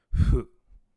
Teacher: it is who but the H kind of sounds like an F so it gets romanized not as who but as Foo even